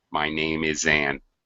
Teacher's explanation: The S in is, which is a Z sound. We join it very, very closely with an. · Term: liaison